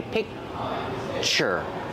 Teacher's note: It sounds like pitcher, but it's a little different. When I say picture, I have the k sound, but I don't release it. So it's a stop sound.